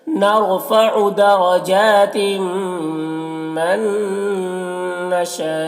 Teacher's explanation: मन यहाँ पर नून साकिन के बाद नून हुरूफ यूमिन में से, तो नून को नून से मिलाकर गुन्ना के साथ पढ़ेंगे, इसको इदगाम नाक़िस कहते हैं। नशा में मद्दे मुत्तसिल से 3-4 अलिफ के बराबर खींचेंगे